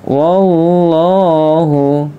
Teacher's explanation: lam jalalah dibaca tebal karena huruf sebelumnya berharakat fathah